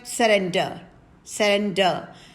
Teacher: surrender where the last r is silent